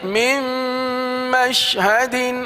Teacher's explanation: اب دیکھیے یہاں پر لکھا ہوا نون ہے میم نون، لیکن چونکہ آگے میم آ گیا تو اس میم کو نون سمیت دوسری میم میں ملا دیں گے. یہ نون دوسری میم میں مل کر ختم ہو جائے گا. میم نون میم زیر مم، میم شین زبر مش، مم مش.